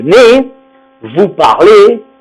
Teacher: Tous les verbes de la 2e personne du pluriel, avec vous, on prononce le E fermé et on ne prononcera pas le Z